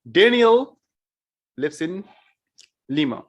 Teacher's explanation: i put stress in daniel i was emphasizing on daniel